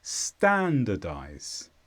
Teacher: this is a verb and the stress is on Stan standardize